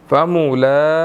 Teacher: اب لام کے اوپر کھڑی زبر ہے، اس کو ہم نے 1 سیکنڈ تھوڑا سا کھینچنا ہے، ٹھیک ہے، قی، ٹھیک ہے.